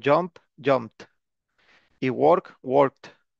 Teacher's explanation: a jumped Ahí está ojo con la pronunciación de Led porque suele pronunciarse como si fuera una t al final